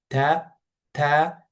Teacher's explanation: T is released from the tip of the tongue and the gum behind upper front teeth. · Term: t sound